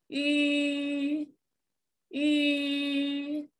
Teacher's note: 读吁的时候，要撅起小嘴巴，吁，而且呢，你的舌尖是抵着下齿背的啊